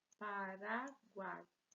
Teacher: Veja que temos o encontro vocálico aqui. 3 vogais juntas, uma mesma sílaba, então, tritongo.